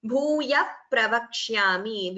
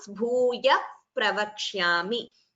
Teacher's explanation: Visarga followed by Pa is what we call Upadhmaniya.